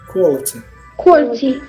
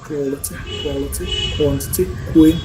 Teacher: Okay, round lips. Same way, your lips should go round. Should make that round thing after k sound